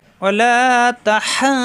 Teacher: চার আলিফ টেনে এসে এই দদের সাথে মিলবে। দদের মাখরা জিব্বার গোড়ার কিনারা উপরের মারি দাঁতের গোড়ায় লাগিয়ে। ওয়ালা তাহাদ্দু, পরের দদে পেশ দু, এই দু মিলবে ওর সাথে, পেশের বামে অসাকিন মাদের হরফ একালিফ টান।